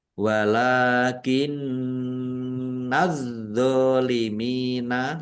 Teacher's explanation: Walakin nazzolimina, lam fathah berdiri juga mat tobi'i, dibaca panjang 2 harokat. Nun tasdid, bacaan gunnah atau mendengung.